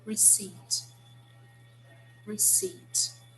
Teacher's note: this word we do not pronounce the p it's silent